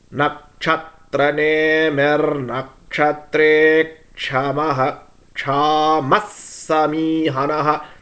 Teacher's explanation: The second Visargam, since it is followed by Sa, will become Chamas. But the first one, Chamaha, Chama.